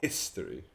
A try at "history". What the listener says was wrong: Can you say that with a bit more hiss?